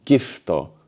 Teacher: So we write gifuto, but here the U gets swallowed up, making the word sound more English.